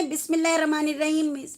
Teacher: را کا کیا ہے ہمارا؟ موٹا کر کے پڑھیں گے